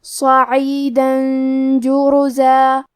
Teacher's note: کلمت جرزا میں جیم پہ اور رے پہ دونوں پہ پیش ہے، تو ہم یہ دونوں پیش کو ظاہر کریں گے اور حرف الراء کو موٹی آواز میں پڑھیں گے